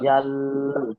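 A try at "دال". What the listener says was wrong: না না, ওরা ঠেকাবেন না, দাল নয়, দাল, মুখ ফাঁক করে তখন দাল।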